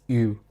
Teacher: if you say E but with round lips, it is U